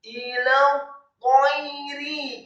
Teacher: ta-nya ditasydidkan tafkhim dengan posisi lidah kita di langit-langit atas. Ta-nya setelah ditasydidkan fathah satu harokat, kemudian ya-nya dibaca sukun dan tipis. · setelah huruf lam ada huruf ta yang tasydid dan wajib untuk disambungkan, maka lamnya menjadi fathah satu harokat. Ila tayri, kemudian ta-nya ditasydidkan tafkhim dengan posisi lidah kita di langit-langit atas.